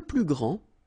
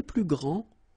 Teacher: you don't pronounce the final D, will be exactly the same as the plural form for the masculine, grand.